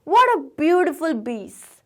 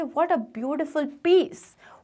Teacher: वो P को B बोलते हैं